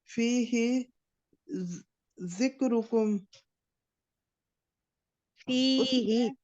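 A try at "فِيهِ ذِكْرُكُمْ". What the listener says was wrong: ही नहीं है, ही को खींचेंगे तो एक या का इजाफा है।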